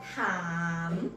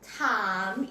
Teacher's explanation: start with the first sound ถอถุง R vowel long sound and M มอม้า final sound or final consonant